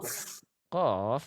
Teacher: huruf qof itu adalah termasuk ke dalam huruf yang tebal. Maka jangan sampai pantulannya itu tipis